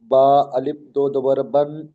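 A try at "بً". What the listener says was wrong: আলিফ উচ্চারণ হবে না, শুধু বা দুজাবার বান।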